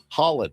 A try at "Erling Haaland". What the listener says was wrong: It's not Holland. Highland. It's right between. It's Highland. Highland. Because there's 2 A's. double A.